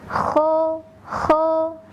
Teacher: ho ho seperti yang sudah pernah disampaikannya episode-episode sebelumnya bahwa kursor dilafazkan dengan cara mengeluarkan suara dari bagian ujung tenggorokan atau tenggorokannya bagian atas